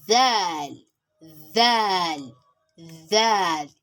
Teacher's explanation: It is pronounced when the tip of your tongue meets the edge of the front upper tooth. But in this case, your tongue must come out, as in Daal, Daal, Daal.